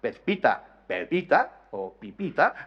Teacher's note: Hay una clara aspiración, una desaparición de la implosiva interdental Z, Pezpita, Pepita o Pipita, desaparece, la Z se aspira y luego se elimina.